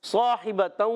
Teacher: صاحبۃ، صاد حروف مستعلیہ میں بھی ہے، حروف مطبقہ میں ایکسٹرا موٹے حروف میں سے بھی ہے، اور صاد کے بعد الف آ گیا، یہ الف بھی موٹا ہو جائے گا